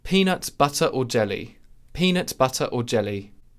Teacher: the word or really begins with a glottal stop. In any dialect, we in English, as English speakers, when a word begins with a vowel, really we tend to close and open our glottis at the beginning of articulation.